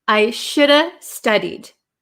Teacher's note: the V kind of becomes silent and we are left with shoulda.